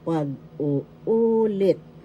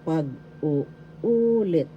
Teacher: The third syllable has the accent.